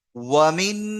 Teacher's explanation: ওয়াওটা টান নেই, মিমটাও টান নেই, নুনটা গুন্না আছে, তাহলে ওয়ামিন।